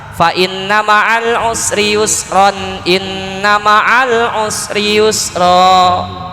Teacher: Tapi kalau ketika wasol hukumnya apa? Wasol itu berarti sambung, tanwin ketemu hamzah. Jadi idhar, dibaca jelas.